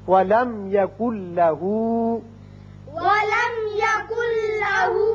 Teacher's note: نون ساکن کے بعد جب لام آ جائے تو وہاں ادغام تو ہوتا ہے لیکن غنہ نہیں ہوتا. اب نون نہیں پڑھا جائے گا، کاف کی آواز لام سے سیدھی ملے گی. یکن لہو پڑھیں گے.